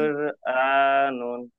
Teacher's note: র এর উপরে সাকিন আছে, র সাকিনের ডান দিকে পেশ আছে, তাকে পুর করে পড়তে হয়।